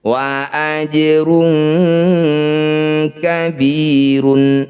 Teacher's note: Di atasnya sudah ada tulisannya qalqalah. Qalqalah itu artinya memantul. Bunyi jim pantulkan tapi jangan berlebihan. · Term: qalqalah sugro